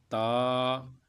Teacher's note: نوک زبان اور ثنایا علیہ کی جڑیں